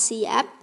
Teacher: p pada kata siap yang dilafalkan dengan merenggangkan kedua bibir kita atau tetap mengatupkan kedua bibir